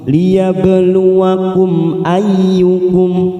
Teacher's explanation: Hati-hati, ada mim sukun, tidak boleh kita tekan. Kita baca jelas tanpa mendengung, tanpa ditekan, namanya bacaan idhar safawi